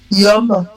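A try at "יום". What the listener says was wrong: Yom, tu vois, tu as fait toute la liaison.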